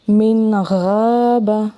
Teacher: آواز کو ظاہر کر کے پڑھیں گے، بالکل واضح آواز نون کے اصل مخرج کے ساتھ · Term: اظہار